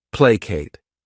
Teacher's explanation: This word has 2 syllables, and the stress is on that first syllable. Placate. What it means is to appease by giving something up.